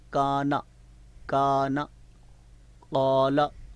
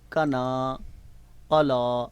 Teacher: جہاں ہم نے مد کے ساتھ پڑھنا تھا وہاں مد نہیں کی، اور جہاں مد بالکل ہے ہی نہیں، خالی حرکت تھی، اس کو ہم نے کھینچ دیا۔